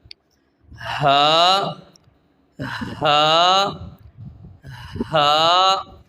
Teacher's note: ہا، ہا، ہا، اب ہا کو 1 سیکنڈ لمبا کرنا ہے، اور اس بات کا خیال کیا جائے، اس بات کو ذہن نشین کر لیں کہ ہا کی ادائیگی حلق سے ہوتی ہے، سینے سے ادا نہیں ہوتی